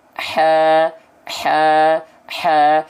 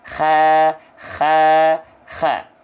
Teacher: ha kecil yang harusnya kita lafalkan dengan karakteristik berbisik